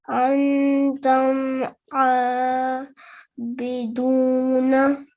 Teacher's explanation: the meme would not be prolonged, and there will be no nasal sound, and it will only be prolonged for 1 second only. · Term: izhar shafavi